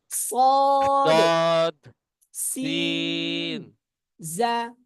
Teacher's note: ১২ নম্বর মাখরাজ, জিহ্বার আগা সামনের নিচের দুই দাঁতের পেট ও আগার সঙ্গে মিলিয়ে